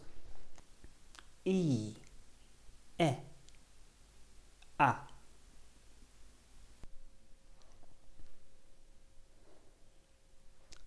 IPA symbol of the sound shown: i: e æ